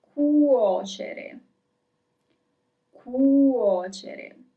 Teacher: at the beginning of the word you have CU, so you have the hard C, cu, and then in the middle you have CE, CE in Italian. And then you have the soft C, cere, cuocere.